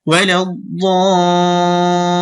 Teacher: লামে একটু সময় দিবেন, তাসদীদ তো দুইবার উচ্চারণ হয়, তো দুইবার উচ্চারিত হতে হলেও একটু সময় নিবে।